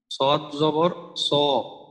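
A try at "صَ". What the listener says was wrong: যখন জবর থাকবে তখন মোটাটা হলো দ্বিতীয় শ্রেণীর মোটা। আরো একটু মোটা করার দরকার।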